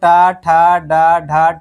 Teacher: अगला है यानी टा वर्ग बोला जाए तो टा, ठा, डा, ढा, टवर्गीन। इसका उच्चारण मूर्धा से होता है